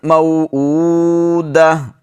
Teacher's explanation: جب گول تا پر وقف کیا جاتا ہے تو اس کو ہا پڑھا جاتا ہے، تو اس کو بھی وقف کی حالت میں قرآن مجید میں جہاں بھی آپ تا گول تا پر وقف کریں گے اس کو ہا ہی پڑھیں گے۔